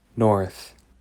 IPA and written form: noɹθ (NORTH)